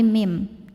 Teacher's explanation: Ini nama hukumnya adalah iqlab karena nun sukun menghadapi huruf ba. Maka cara bacanya bunyi nun sukunnya diganti jadi bunyi mim sukun. Jadi bukan min tapi mim dan dengungkan.